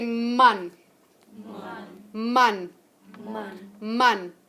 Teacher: where are you articulating that sound from your lips okay so it's bilabial